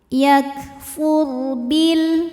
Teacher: huruf sebelumnya berbaris di atas dhammah, maka dibacanya tebal